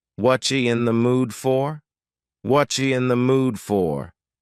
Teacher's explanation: The word are is gone, and the word you has been reduced to ya. So when we link together what and you super fast, what you in the mood for?